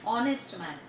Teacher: Honest start with vowel sound O when we pronounce. The letter H is silent. उसमें H silent है और हम जब उसको pronounce करते हैं तो वो honest बोलते हैं.